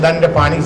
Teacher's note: ई जे nasal जे छियै ओकरा हमसब कहै छियै अंग्रेजी में रेट्रोफ्लेक्स नेजल, मूर्धन्य ण छियै।